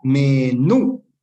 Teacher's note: para que sea aguda debe tener su sílaba, eh, debe estar acentuada en la sílaba tónica, ¿no es cierto? La última sílaba debe ser tónica, es decir, la de acá, me-nú.